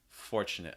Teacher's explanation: you have the r before the consonant so fortunate make sure it's strong enough in american english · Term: r sound